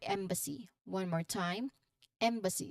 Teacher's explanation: the first syllable which is the the stressed part